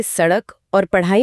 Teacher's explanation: इनमें 2 गुण हैं। ये ड और ढ से विकसित हुए हैं और इनमें एक उछाल की ध्वनि होती है। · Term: द्विगुण व्यंजन